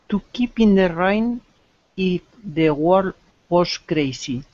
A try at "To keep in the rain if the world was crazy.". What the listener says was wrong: Yes. Okay.